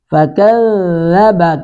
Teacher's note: کاف بھی باریک ذال بھی باریک